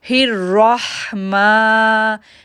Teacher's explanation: الرحمن، ماں کو کھینچیں گے 2 سیکنڈ کے لیے کیونکہ اس کے اوپر کھڑی زبر ہے